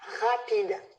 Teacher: ma langue, elle n'est pas du tout levée, elle est posée au fond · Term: uvulaire